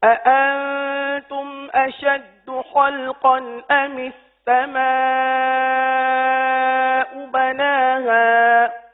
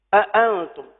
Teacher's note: حمزہ جو ہے یہ سختی سے ادا ہونے والا حرف ہے. جب ہم اس حمزہ کی ادائیگی کرتے ہیں تو کچھ سختی ہے اس کے اندر.